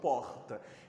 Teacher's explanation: E ainda faz uma marcação do R na garganta